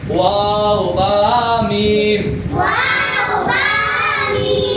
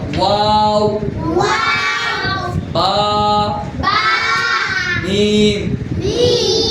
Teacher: দুই ঠোঁট হইতে ওয়াও বা মিম উচ্চারিত হয়